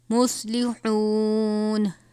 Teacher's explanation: صاد کو پر پڑھیں گے، حا کو باریک پڑھیں گے. حا واو پیش ہو، واو مدہ ہے.